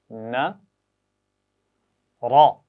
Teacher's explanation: زبر کے ساتھ را کو موٹا پڑھنا ہے، زبان کی نوک اوپر والے دانتوں کے پیچھے مسوڑوں پر لگانی ہے۔